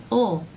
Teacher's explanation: In the light L, ul, it's just the tip of the tongue that's either raising, ul, or coming through the teeth. So the sound will feel very far forward.